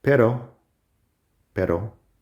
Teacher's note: you just flap your tongue up onto the i think we would call it the alveolar ridge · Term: soft r